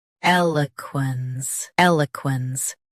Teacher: Both US and UK have the same pronunciation of this word. Stress first. Keep l soft, then finish quens cleanly.